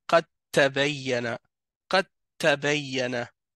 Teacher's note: On relie directement le qaf avec le ta.